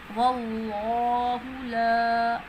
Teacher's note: لفظ اللہ کے لام سے پہلے زبر آ رہی ہے تو لفظ اللہ کا لام موٹا پڑھیں گے